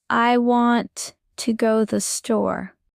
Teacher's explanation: The strong words are want store. The weak words are I to the.